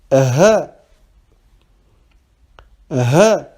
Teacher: C'est comme si vous étiez à bout de souffle.